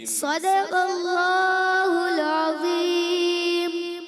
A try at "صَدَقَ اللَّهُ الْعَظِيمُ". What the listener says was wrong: لام ہل جاتے ہیں. چلیں اس کی پریکٹس دیکھیں بار بار سمجھاتے بھی ہیں نا کہ لام ساکن کو ہلانا نہیں ہوتا تو آپ نے بھی ہلانا نہیں ہے.